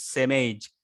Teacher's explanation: I think the speaker links the sound same and age